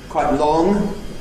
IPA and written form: ˈkwaɪʔ ˈlɔŋ (Quite long)